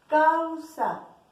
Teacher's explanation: Se unen las dos vocales, una vocal abierta y una cerrada, A-U, causa. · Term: diptongo